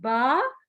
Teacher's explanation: दोनों होंठों को मिलाकर जब अलग करते हैं तो बा अदा होता है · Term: होंठों वाले हरूफ